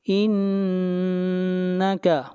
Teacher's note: نون کے اوپر غنہ ہوگا، آواز ناک میں جائے گی